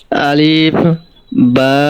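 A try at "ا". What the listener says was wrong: হ্যাঁ, আলিফে তো টান দেন। আলিফ আলিফ আলিফ।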